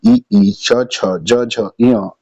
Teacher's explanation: इन सबका उच्चारण स्थान जो है वो तालू से होता है